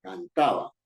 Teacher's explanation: La palabra cantaba es una palabra grave porque su fuerza de voz está en ta